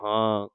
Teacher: ਬਲਿਹਾਰ ਜਿਹੜਾ ਇਹ ਹਾਂ ਸ਼ਬਦ ਹੈ ਇਹਦੇ ਉੱਪਰ ਬਿੰਦੀ ਲੱਗੀ ਹੈ ਇਹ ਨੱਕ ਦੇ ਵਿੱਚ ਦੀ ਵੀ ਬੋਲਿਆ ਜਾਏਗਾ